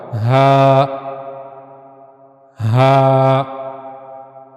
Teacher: ہا کو ادا کیسے کیا جائے گا؟ ہا کو ادا کرنے کے لیے گلے کا سب سے نچلا حصہ استعمال ہوگا۔